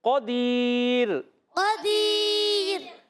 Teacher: یہاں پر را کو رکھنا ہے باریک، پور نہیں پڑھیں گے